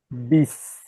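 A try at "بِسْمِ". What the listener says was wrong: Don't say E. Beast. Beast. So you're saying bis. E. E. One tip for the kasra is smiling. E. Beast. You're saying bis. Can you hear the difference between the two ones? So one, you're only saying bis. You need to be saying beast.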